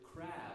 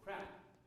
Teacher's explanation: the way that we distinguish a voiced consonant from an unvoiced consonant at the end of a word is by a long or short vowel. For example, the word crab versus crap. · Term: long and short vowels